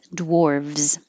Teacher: Or it can be spelled with a V, dwarves, in which case you make a V and a Z